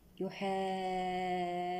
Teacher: يحادون هنا مد لازم كلمي مثقل بمقدار 6 حركات